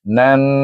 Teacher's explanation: dibaca dengan wajibul gunnah, dengung dua harakat kerana nun bertasydid